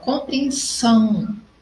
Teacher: Então, eu tenho ali, compreensão, minha última sílaba forte, ou eu posso dizer que é a minha primeira contando da direita para a esquerda. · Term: oxítona